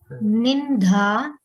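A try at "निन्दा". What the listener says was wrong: It is not. It is not Nindha. It is Ninda, because this is a Alpa Prana and not a Mahaprana.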